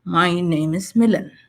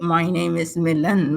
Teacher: statements and answers also have a falling tone